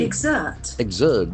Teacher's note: the accent falls on second syllable. You exert pressure.